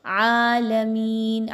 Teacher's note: آگے با پر تشدید ہے، را اور با کو آپس میں مضبوطی کے ساتھ ملائیں گے، عالمین، عین پر کھڑا زبر ہے، اس کو 2 حرکات کے برابر لمبا کریں گے، میم زیر یا، می یا پر جزم کا نشان ہے اور اس سے پہلے والے حرف میم کے نیچے زیر ہے، 2 حرکات کے برابر یا مدہ کی ادائیگی رکھیں گے۔